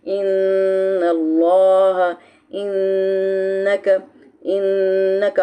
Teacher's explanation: आप थोड़ा सा रुकेंगे 2 सेकंड के लिए तो आपकी ज़बान तालू के साथ जाएगी और आवाज़ जो है वो खुद ब खुद नाक के बांसे में जाती है। नाक के बांसे से जब निकलती है एक बिनबिनाहट पैदा होती है, उसको गुन्ना कहा जाता है। गुन्ना होता है 2 लेटर्स के ऊपर, नून मुशद्दद के ऊपर और मीम मुशद्दद के ऊपर।